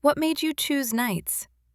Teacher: That rising tone, some people call it uptalk, signals, I'm listening. Tell me more. · With a gentle rise at the end, almost like an invitation.